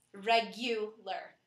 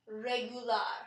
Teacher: regular in English in English the U is stressed regular however in Spanish it is pronounced regular and we stress the AR at the end